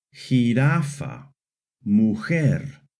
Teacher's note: The letter J in Spanish always makes a strong H sound